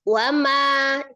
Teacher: ma itu bacanya panjangnya 2 harokat kan, karena ada matobi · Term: matobi'i